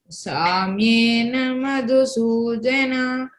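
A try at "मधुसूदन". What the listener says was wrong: Madhu is D Mahaprana, no? You have to stress. Samyena Madhusudana. Don't elongate Samyena.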